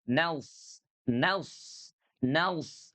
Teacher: Huruf sodnya itu kerasa banget gitu ya. Udah mah tebel bunyinya, udah gitu lengket gitu ya. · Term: itbaq